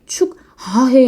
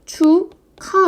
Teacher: 기억과 히읗이 키읔으로 두 개가 하나로 줄었어 합쳐졌어요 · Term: 자음 축약